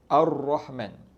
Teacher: Ra ni makhraj dia dekat hujung lidah. Hujung lidah yang digetarkan ke atas. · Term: huruf ra